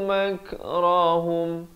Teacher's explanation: Bila kaf ada tanda mati asli, ada bunyi anginnya. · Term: bunyi hamas